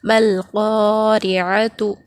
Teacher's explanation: یہاں پر میم سے لام کو ملا کر پڑھیں گے کیونکہ یہاں الف اور لام کے بعد حروف خمری میں سے قاف آ رہا ہے